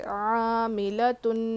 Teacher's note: نون الف زبر نا، الف مدہ ہے، مد اصلی ایک کھینچنا ہے ایک الف کے برابر، پھر جو ہے یہاں پہ غنہ بھی کرنا ہے، نون پر تشدید ہو تو غنہ کریں گے